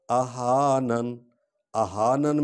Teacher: اہانن، اہانن میں آپ غور کریں، ایک تو ہا کو ہم نے سینے کی ہڈی سے نکالنا ہے، دوسرا جو ہے آخری جو نون کے نیچے زیر ہے اس کو نہیں پڑھنا کیونکہ ہم وقف کر رہے ہیں